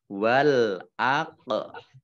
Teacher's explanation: qof sukun bacaan Qalqalah dibaca memantul ditampakkan pantulannya